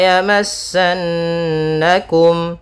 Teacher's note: kembali lagi ada nun bertasydid bacaan gunnah, ditahan dulu suara n-nya